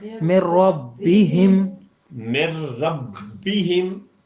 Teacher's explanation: نون کی آواز تک نہیں آئی، یعنی مکمل داخل ہو گیا · را جو ہے آپ نے دیکھا نا لر، یعنی جہاں یہ 2 آئیں گے وہاں مکمل ہوگا. نون ساکن کے بعد جب لام آئے گا یا رے آئے گا تو ہمیشہ وہاں پر ادغام مکمل ہوگا، یعنی نون کی آواز یوں سمجھیں باقی نہیں رہے گی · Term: ادغام کامل